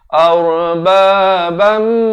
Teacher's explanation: Di sini idgham bi gunnah, masuk beserta dengung. Daripada ban jadi bam, masuk terus beserta dengung 2 harakat.